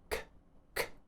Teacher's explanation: a release of air so what you should be doing is pressing the middle of your tongue up against the top of your mouth C and releasing pressure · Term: k sound